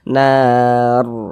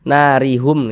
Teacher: huruf ro sukunnya pun dibaca tabkhim, dibaca tebal. Nah, sehingga pangkalisan pangkalisan kita naik terangkat ke atas ketika kita mengucapkannya.